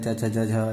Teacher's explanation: ठीक है, किसके? तालु और जीभ के स्पर्श से जिनका उच्चारण होता है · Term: तालव्य